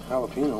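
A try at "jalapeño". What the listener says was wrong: It's a J's like an H.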